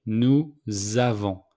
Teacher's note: So, with the 3 pronouns plural, we make the liaison between nous and avons. So the S became a Z.